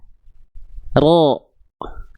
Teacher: Jadi si punggung lidahnya yang nempel, ujung lidahnya dia nggak betul-betul nempel, sehingga dia ada seperti celah kecil seperti ini. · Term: huruf ro